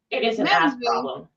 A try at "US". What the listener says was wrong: and the way I heard it was ass problem.